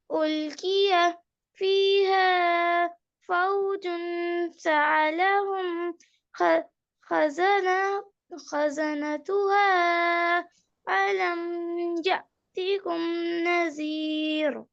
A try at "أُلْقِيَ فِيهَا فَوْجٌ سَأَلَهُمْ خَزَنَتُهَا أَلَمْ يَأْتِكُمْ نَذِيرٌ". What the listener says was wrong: جو دو مدات ہیں ان کو بہت زیادہ کھینچ رہی ہیں، ان کو اتنا نہیں کھینچتے.